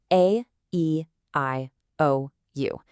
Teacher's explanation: Your lips didn't touch, and your tongue didn't have to strike the roof of your mouth. The sound originated directly from your throat, completely unobstructed. Now, on the flip side, try saying B, P, or M. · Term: vowels